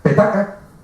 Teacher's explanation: la P, la T y la K, observarán que no vibran las cuerdas vocales, no vibran